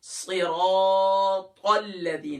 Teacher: تو صرا، اب یہاں کیا صرا، صاد کے نیچے تو زیر ہے لیکن را کے اوپر اپنی حرکت ہے، وہ کیا ہے زبر ہے، تو ہم را کو موٹا کریں گے